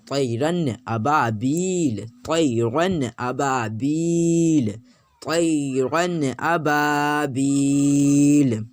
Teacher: نون ہے تو نون کو ظاہر کر کے پڑھنا ہے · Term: نون ظاہر